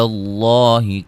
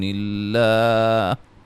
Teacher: لفظ اللہ کے لام کو موٹا ادا کریں گے